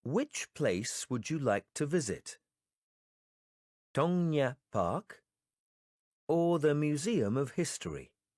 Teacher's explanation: in the sentences with a lot of choices we will use the rising intonation for the first choices then we will use the following intonation for the last congratulations